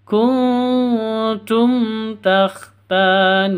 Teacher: mim mati bertemu dengan ta cara bacanya jelas terang tidak boleh dengung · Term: izhar syafawi